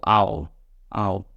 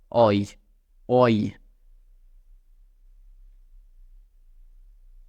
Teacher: they are pronounced as single sounds that glide from one vowel to another